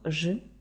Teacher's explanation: буква ж означає звук ж він приголосний дзвінкий твердий